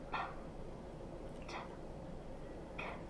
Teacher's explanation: These are quiet sounds or voiceless sounds. These sounds don't vibrate your throat because your vocal cords are open